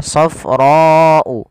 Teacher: Kemudian melafal safra'u faqi'ul launuha. Panjangkan huruf ra sepanjang 4 harokat karena di sini ada bacaan yang kita namakan dengan mad wajib muttasil